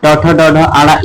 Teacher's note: मूर्धन्य तालु के मूर्ध भाग से ट ठ ड ढ ये सब आपके आ जाएंगे